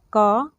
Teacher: इसका उच्चारण कंठ के स्पर्श से होता है। तो इसको हम लोग क वर्ग बोलते हैं, यानी व्याकरण में इसको क वर्ग में रखा गया है।